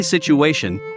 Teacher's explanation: we say situation by adding an invisible W between the vowel syllable U and A.